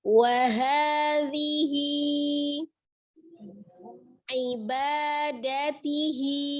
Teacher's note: Huruf dzal makhrajnya ada di ujung lidah yang bertemu dengan ujung gigi seri bagian atas ya. Tapi dia dibaca dengan lembut saja, orghah ya.